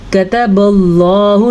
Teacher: اللہ کا نام پر پڑھا جائے گا کیونکہ اللہ کے نام سے پہلے زبر ہے